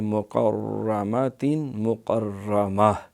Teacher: دیکھیے مقرمات مقرمہ، یہ را کے اوپر شد ہے، تشدید ہے، اس را کو کہیں گے مشدد۔ اس کو 2 دفعہ پڑھیں گے، ایک دفعہ کاف سے ملائیں گے مقر، دوسرا را۔